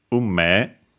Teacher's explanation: Accented on the first syllable